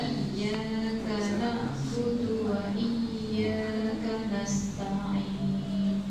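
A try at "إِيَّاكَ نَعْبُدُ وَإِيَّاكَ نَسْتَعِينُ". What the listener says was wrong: Oke, jadi nanti dilatih malah nggih, jangan terlalu panjang, masih kepanjangan ya-nya.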